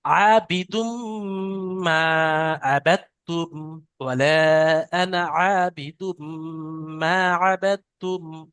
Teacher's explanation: তানবিনকে মিমের সাথে মিলিয়ে একাধিক পরিমাণ গুণনা করে পড়তে হবে, একে ঈদগামে নাকিস বলা হয়।